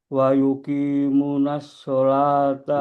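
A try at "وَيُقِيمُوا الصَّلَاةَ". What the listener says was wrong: wa yuqimus salata. ada na, gak ada na. Wa yuqimus salata.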